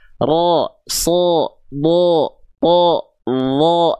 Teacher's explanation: Nah, sekarang ingat, kalau vokal A berarti dia tipis, a, ba, ta, sa, ja, dibaca dengan keadaan tipis. Tapi kalau huruf yang dia terdengar ketika fathah itu seperti O, berarti dia sedang dibaca dengan keadaan tebal.